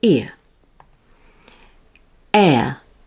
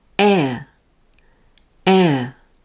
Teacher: now with ear my jaw doesn't move it stays at a neutral position and my tongue is closer to the roof of my mouth